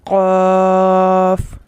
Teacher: حرف قاف کو ادا کرتے وقت ہمارا نرم تالو زبان کے پچھلے حصے سے چپکتا ہے۔